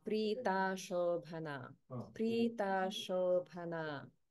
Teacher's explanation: Because of Sandhi, the A in Ashobhana becomes combined with the A in Prita.